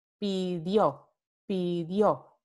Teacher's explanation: Esta pi forma parte de una sílaba átona. Y segundo, importantemente, este cambio va a ocurrir antes de la semivocal I o de una A tónica.